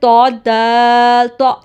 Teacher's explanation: اس میں زبان کی جو نوک ہوتی ہے وہ اوپر دانتوں کی جڑ کے ساتھ لگتی ہے، اوپر ٹپ کے روٹ کے ساتھ لگتی ہے، یعنی کہ گم لائن جو ہوتی ہے نا، جہاں سے دانت جڑے ہوئے ہوتے ہیں وہاں سے زبان کی نوک لگے گی.